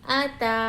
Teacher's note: کھڑا زبر کو ہم ایک الف کی مقدار کھینچ کر لمبا کریں گے۔